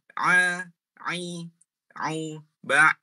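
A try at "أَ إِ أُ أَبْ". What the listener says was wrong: Alirkan. Ketika dia sukun, dialirkan sedikit Mas. Ba. Ba. Jangan langsung putus ya. Bukan ba. Tapi ba.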